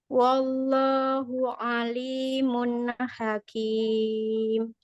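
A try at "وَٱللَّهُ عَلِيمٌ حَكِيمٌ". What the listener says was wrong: Tebalkan lagi ismu jalalanya. Wallahu alimun hakim.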